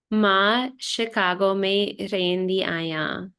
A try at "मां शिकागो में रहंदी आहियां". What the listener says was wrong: रहंदी आहियां. Very good.